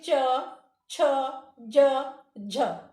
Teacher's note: च, छ, ज, झ बोलने में जीभ जहां पर छुल रही है, ऊपर दांत के ऊपर वाले हिस्से में छुल रही है, उसी को कहते हैं तालव्य।